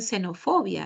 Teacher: En xenofobia no suena así, ¿no? Suena como la alveolar S